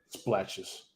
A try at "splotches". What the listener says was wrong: Splotches, not splatches.